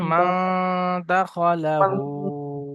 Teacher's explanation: নুন সাকিনের পরে, নুন সাকিনের পরে একফার হরফে 15টি একফার, অক্ষরের মধ্যে থেকে একফার 15টি অক্ষরের মধ্যে দাল এসছে, একে নুন সাকিনের আওয়াজকে নাকে তুলে একালিপ পরিমাণ গুণনা করে পড়তে হয়। খয়ের উপরে যাবার এসছে, যাবারটি হলো হারাকাত, হারাকাতের পরে তাড়াতাড়ি পড়তে হয়, টান দেওয়া নিষেধ।